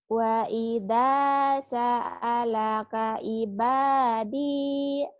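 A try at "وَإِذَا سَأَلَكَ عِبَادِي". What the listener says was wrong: Wa idza sa'alaka ibadi. Hutang ain ya. Ibadi. Hutang ain.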